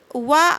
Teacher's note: होता है इसे देखते हैं व का उच्चारण स्थान दंतोर अर्थात दांत और ओष्ठ के संयोग से व का उच्चारण स्थान होता है